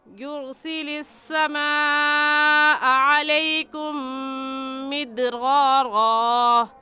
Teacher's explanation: समा में मद्दे मुत्तसिल और मद्दे वाजिब है, क्योंकि हरूफ मद्दा के बाद हमज़ा उसी कलमे में है, इसलिए इस मद को 4 अलिफ के बराबर खींच कर पढ़ेंगे, न इससे कम और ना ही इससे ज़्यादा। · दाल हरूफ कलकला में से है और साकिन है, सो उस पर कलकला करके पढ़ेंगे। उम्मीद है आपको सबक आज का अच्छे से समझ आ गया होगा। · अलैकुम की मीम साकिन पर गुन्ना क्यों करेंगे? क्योंकि मीम साकिन के बाद मीम आ गया है, इसलिए इस मीम साकिन पर गुन्ना करेंगे।